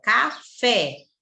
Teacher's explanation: a última sílaba é que é a forte não é oxítona